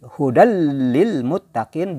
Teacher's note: bila gunah tanpa dengung. Jadi tidak terasa dengungnya kan. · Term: idgham bila gunah